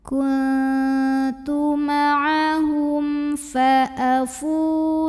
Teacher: Karena waw sukun didahului baris dhammah, maka fa-nya kita panjangkan cukup 2 harokat saja. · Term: mad tabi'i zahiri